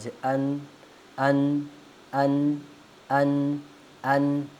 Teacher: जब हम इसको अन पढ़ते हैं तो यह जो हमारा जो आवाज है ये नाक में भी हल्की सी जाती है क्योंकि इससे गुना भी नून पे ही होता है तो फिर इस वजह से हल्की सी नाक में भी जाती है आवा अन अर अर रा को हमने क्या पढ़ना है मोटा पढ़ना है अर अर अर अर हां तो हमने आज कितने हरूफ पढ़े आज हमने छह हुरूफ पढ़े।